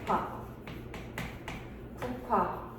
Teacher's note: 비읍이 히웃을 만나게 되면 세 번째 피읍이 되는 거지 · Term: 거생소리 대기